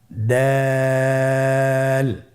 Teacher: জিহ্বার আগা সামনের উপরের দুই দাঁতের গোড়ার সঙ্গে লাগিয়ে উচ্চারিত হয়। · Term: দাল